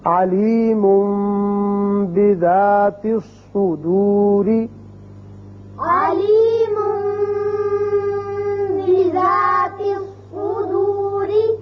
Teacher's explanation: جب بھی نون ساکن یا تنوین کے بعد حرف با آ جائے تو وہاں اقلاب کی وجہ سے ایک الف کے برابر آواز ناک کے بانسے میں ٹھہرتی ہے